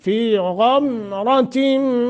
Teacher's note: غمرتن غین کو موٹا، را کو بھی موٹا، غین حروف مستعلیہ میں سے، فی غمرتن را کو بھی موٹا۔